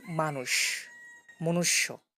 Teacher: মানুষ আর মনুষ্যতে আমরা লিখতেছি মূর্ধন স কিন্তু উচ্চারণ করছি তালব্য স এর মত · মানুষ আর মনুষ্যতে আমরা লিখতেছি মূর্ধন্য ষ কিন্তু উচ্চারণ করছি তালব্য শ এর মতো। সো এইখানে যেহেতু উচ্চারণ তালব্য শ এর মতোই হয়, এই জন্য আলাদা করে লেখা হয় না, তালব্য শটাই লেখা হয় ধ্বনির ক্ষেত্রে।